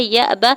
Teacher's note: یا کے زبر کو حمزہ ساکن کے ساتھ ملاتے ہوئے ہلکا جھٹکا دیں گے ، با کے زبر کو بغیر کھینچے ہوئے ادا کرنا ہے،